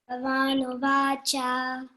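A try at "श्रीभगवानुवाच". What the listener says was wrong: that bha is aspirated one or mahaprana. Okay, you have to stress and then pronounce. Shri Bhagavanuvacha.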